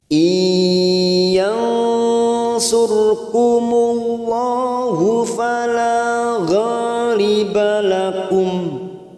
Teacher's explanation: Nun sukun bertemu ya, namanya bacaan idgham bi gunnah